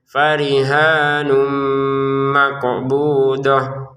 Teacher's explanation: farihanun ini masukkan tanwinnya ke mim dengan disertai dengungan.